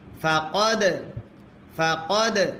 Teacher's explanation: দালে যদি সাকিন হয় কল কলা করতে হয়।